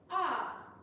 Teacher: Tone 2, A, has a falling contour from high to low.